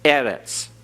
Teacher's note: Notice eretz has a accent over the first syllable. So we emphasize that first syllable.